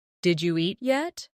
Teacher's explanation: When spoken quickly, it sounds like Jeet yet. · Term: connected speech